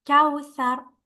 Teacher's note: Ka followed by waw with a sukun. You're gonna have to make your lips rounded here, like when you pronounce the W in English, like wow. Kawthar.